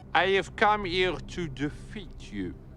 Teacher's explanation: he omits the H sound, which we French people have a lot of difficulty with